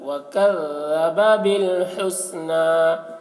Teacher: ذال کو باریکی کے ساتھ، وَكَذَّبَ بِالْحُسْنَىٰ، حسنہ ہا کو حلق سے ادا کریں گے.